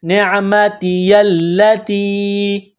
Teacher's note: تا کو یا کے ساتھ ملانا ہے، یہ مد ہے، 3 الف کی لمٹ میں اس کو کھینچنا ہے